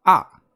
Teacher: the fourth tone is a descending marker